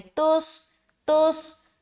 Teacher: صاد کو موٹا رکھتے ہوئے ملائیں گے